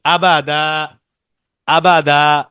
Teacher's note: যখন আমরা এই দুই জবর তানবিনের ক্ষেত্রে যখন থামবো, হ্যাঁ, দুই জবর তানবিনের পরে যে একটা আলিফ থাকে ওইখানে যখন আমরা থামতে চাইবো, ওয়াকফ করব, তখন এক আলিফ টান হবে।